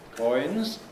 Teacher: a nucleus on coins, with a low rise, coins. Before that there was a high stepping head.